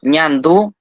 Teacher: es una consonante palatal nasal que se pronuncia igual que en español